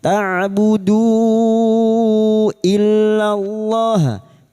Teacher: La ta’budu, ta’budu, huruf ain sukun. Pertemuan Ta'budu dengan hamzah dalam kata yang berbeda adalah mad jaiz munfasil, diperpanjang dengan empat atau lima harakat. · lam jalalah yang didahului dengan fathah yang dibaca tafkhim